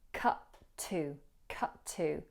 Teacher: we merge the two T's in cut and to. So we hear cut to, cut to. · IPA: /kʌtə/